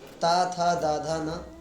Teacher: इन 5 वर्णों का तवर्ग का उच्चारण स्थान दंत होता है, अर्थात दंत का सीधा सीधा अर्थ है दांत। जब हमारी जिह्वा दांतों में टच होती है तब हम ता था दा धा ना बोल सकते हैं, अन्यथा हम ता था दा धा ना का उच्चारण नहीं कर सकते।